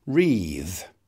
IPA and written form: riːθ (wreath)